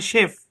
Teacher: French ভাষায় সিএইচ এর sound হচ্ছে তালব্য শ এর মতো।